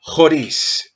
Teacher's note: el acento lo encontramos en la segunda sílaba, es decir, donde está el acento se hace la fuerza